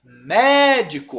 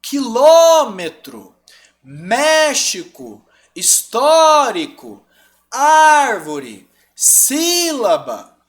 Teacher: Proparoxítona, antepenúltima. Médico, olha onde está o mé.